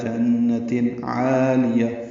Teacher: جنت میں نون مشدد پہ غنہ ہے ، تنوین کے بعد عین آنے کی وجہ سے اظہار ہے،